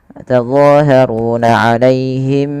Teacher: Suara bunyi mimnya, karena di sini ada bacaan namanya ikhfa syafawi.